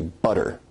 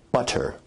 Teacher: notice where we write it with two t's in english that your tongue is producing a tap sound there rather than a full stop or plosive sound so in north american english you say butter now as compared